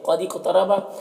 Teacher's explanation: کو میں واو مدہ ہے، 1 الف کے برابر کھینچیں گے۔ قد اقترب قاف حروف مستعلیہ میں سے پر پڑھیں گے